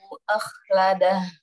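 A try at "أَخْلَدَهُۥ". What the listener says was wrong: Akhladah, lebih tebal lagi. Akhladah.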